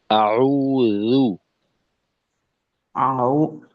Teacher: আর এখানে জু, জা, জি, জু যেন জু হয়ে না যায়। এখানেও মাখরাজের বিষয়টা জিহ্বার আগা, সামনের উপরের দুই দাঁতের আগা